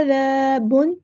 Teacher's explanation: ذال کو باریک اور نرمی سے ادا کرنا ہے